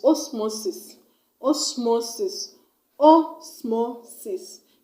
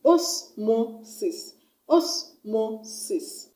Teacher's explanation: It has 3 syllables, and I'm going to stress on the second syllable from the end of the word. So I'm going to stress on M-O, the mo, osmosis, osmosis.